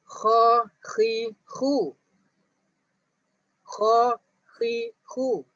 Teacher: Bila kamu sebut kha, khi, khu, kamu akan rasa dekat bahagian hujung halqum. Sebab apa? Sebab huruf itu keluar dekat situ.